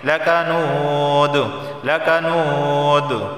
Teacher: اسے ایک الف کے برابر کھینچ کر پڑھا جائے گا